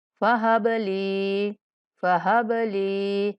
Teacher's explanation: با پر کلکلا کرنا ہے اور لام کو ایک الف کے برابر لمبا کر کے پڑھنا ہے